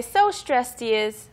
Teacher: So usually we connect the D with the H.